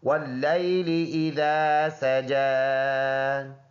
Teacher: واللیل، لام یا زبر لئی، لام ریل لی، یہ حمزہ ہے، ذال نرم ہے، یہ الف پڑھا جائے گا، اور سجا جیم پر کڑی زبر ایک الف کے اندازے سے اس کو لمبا کر کے پڑھیں گے، یا سائلنٹ ہے کیونکہ یہاں پر کچھ بھی نہیں ہے۔